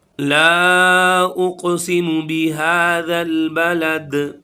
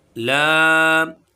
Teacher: इसको हम खींच के पढ़ेंगे, मद्दे मुनफसिल है, 2 से 3 अलिफ के बराबर खींचना है